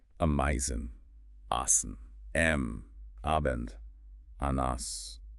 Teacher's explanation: maintaining that clear open a vowel and the transition to the nasal m or n while just repeating words that sound really similar at the start